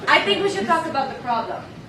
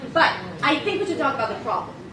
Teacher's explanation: We start high, we drop down. That's the pattern, usually. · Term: Israeli accent